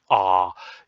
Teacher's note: you will have your tongue lowered in your mouth and you will be pronouncing what we call a a low vowel